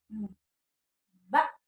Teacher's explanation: Huruf ba itu keluarnya dua bibir tertutup. Ba ya. Ba huruf aslinya itu dia ada tekanan di belakangnya, ada hamzah mati.